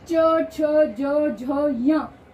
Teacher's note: पांचों वर्ण ही तालू को स्पर्श कर कर आते हैं इसलिए इसे स्पर्श व्यंजन कहा गया है इसी तरह से ट · च, छ, ज, झ, य 5 वर्ण ही तालु को स्पर्श कर कर आते हैं